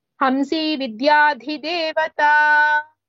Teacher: dhi only mahaprana, the remaining two das are alpa pranas.